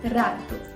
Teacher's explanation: o som é produzido por alguns toques rápidos de um articulador em outro · o ápice da língua entra em contato com os dentes incisivos superiores ou alvéolos. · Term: vibrante alveolar vozeado, vibrante alveolar vozeada